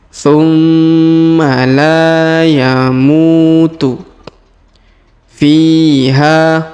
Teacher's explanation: huruf Fi dipanjangkan dua harakat karena di depannya terdapat ya sukun